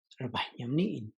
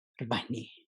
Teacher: the first one is really breathy, and the second one is not as breathy